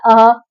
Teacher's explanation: आप बोल के देखिए अंग अः एक में आपको अ की आवाज पहले आएगी फिर अंग की आवाज आएगी छुपी हुई। और अः में जब भी विसर्ग में आपको पीछे ह की आवाज आती है